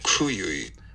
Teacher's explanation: the aspiration this part between the release bursts and the beginning of voicing lasts for about a hundred and thirty five milliseconds which is a lot of aspiration